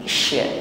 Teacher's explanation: Sebelum sya kita ucapkan atau shin ya, ada tafasyi di sini, meluasnya ya, udara atau nafas di dalam mulut kita, bukan sekedar sadid ya, bukan desis di ujung lidah, tetapi menyebar anginnya